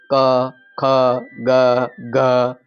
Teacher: ક ખ ગ તમે બોલો ત્યાં જ તમને ખબર પડી જશે કે અવાજ કંઠમાંથી નીકળે છે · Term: કંઠવ્ય